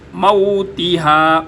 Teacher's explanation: ता ऊपर वाले दांतों के जो अंदर के जाड़े हैं वहाँ पर ज़ुबान को लगाएंगे तो ता अदा होगी